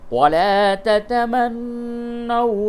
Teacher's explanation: وَلَا تَتَمَنَّوْا مَا فَضَّلَ اللَّهُ بِهِ بَعْضَكُمْ عَلَى بَعْضٍ، یہ وقف مطلق تا ہے، اس جگہ پہ آپ وقف کریں، اور قواعد اس کا یہ ہے نون مشدد ہے، اس جگہ پہ غنہ ہوگا، اور واو ساکن سے قبل اگر زبر ہو تو وہ واو لین ہے، یعنی اس کو نرمی کے ساتھ بولیں گے، تو یہ واو مدہ نہیں ہے بلکہ واو لین ہے.